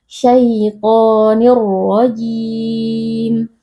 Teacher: Jadi kita memasukkan tanwin ke dalam huruf ra atau memasukkan bunyi nun sukun yang ada pada tanwin ke dalam huruf ra, lalu kita baca tanpa berdengung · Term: idgham bila gunnah